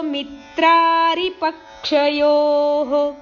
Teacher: ಯೋಹೋ ದೀರ್ಘ ಹೇಳಿ ವಿಸರ್ಗ ಹೇಳಬೇಕು